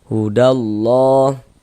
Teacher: Sebelum lafaz Allah misalnya sebelah sininya nih ada harakat domah, ada tanda baca dhamah misalnya, maka lafaz Allahnya juga dibaca tebal. Dibaca tabkhim huruf lam jalalahnya seperti itu.